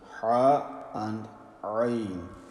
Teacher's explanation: So both from the middle of the throat. Ha and Ain.